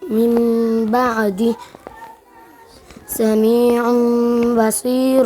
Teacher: دغه نون ساکن او تنوین به په میم ساکن سره بدلیږي او د یو الف په مقدار غنه پکې د اقلاب کېږي